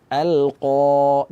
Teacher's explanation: Makhraj qaf ini berada di akar lidah bertemu dengan langit-langit berdaging. Nah, cuma dia bersifat tebal sehingga suara terus kita arahkan ke atas. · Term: huruf tebal